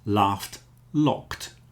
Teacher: You hear how a locked has a t on the end after the k sound, because the k is unvoiced.